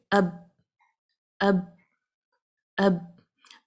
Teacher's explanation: تو میرے ہونٹوں پہ آواز با کی ٹھہر رہی ہے، اور میں اس کو باؤنس نہیں کر رہی، میں اب نہیں کہہ رہی، بلکہ میں اس کو اب کہہ رہی ہوں، تاکہ مجھے پتہ چلے کہ میری آواز ٹھہرتی کہاں ہے، اس حرف کی آواز کو جاننے کے لیے، اس کا مخرج دیکھنے کے لیے.